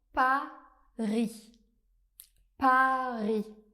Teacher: Pour prononcer le son A, on va prononcer un A bien ouvert